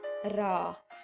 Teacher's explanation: उच्चारण में जीवा का 2-3 बार कंपन करना पड़ता है, उसे हम लोग परकंपित कहते हैं।